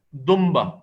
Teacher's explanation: دمبا، دنبا نہیں پڑھتے اس کو، دنبا نہیں. نون ساکن کی جگہ یہاں میم ساکن پڑھتے ہیں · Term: اقلاب